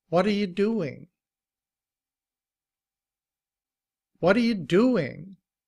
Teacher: And notice that the T is often pronounced like a D. Also, it's a it's a soft T.